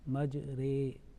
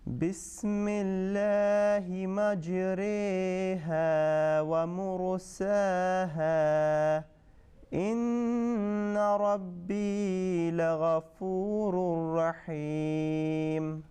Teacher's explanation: Little bit longer, okay, because you are inclining, making a imala.